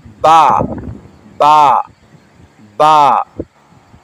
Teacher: یہ با دونوں ہونٹوں کے تر حصے سے ادا ہوتا ہے،